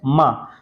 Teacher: माँ ओष्ठ सघोष, ये भी सही है